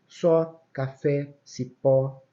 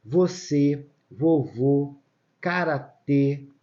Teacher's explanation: Vovó, acento agudo, timbre aberto. Vovô, acento circunflexo, ele tem um timbre fechado.